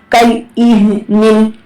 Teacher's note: ہا اقصا حلق سے ادا ہوتی ہے، اس کا مخرج اقصا حلق ہے.